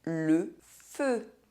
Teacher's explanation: when EU and OEU have a closed pronunciation - [ø]